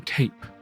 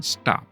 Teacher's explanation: stops that are pronounced with an extra puff of air, like the T in tape, versus the T in stop, which is not aspirated